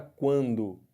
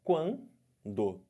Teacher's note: do U para o A tá crescendo ditongo crescente · Agora olha o que acontece no ditongo nasal. O som sai pela boca e sai um pouco de som pelo nariz. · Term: ditongo crescente nasal